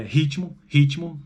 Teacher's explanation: Ritmo, veja que tem um I ali depois entre o T e o M, embora na escrita sejam duas consoantes